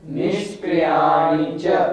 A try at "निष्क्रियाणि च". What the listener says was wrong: हमेशा ध्यान रखें आप, छोटी ई की मात्रा अपने को छोटी ई की बोलनी है, निष्क्रियाणी नहीं, निष्क्रियाणी च, छोटी की मात्रा णी है तो छोटे ई की बोलनी है।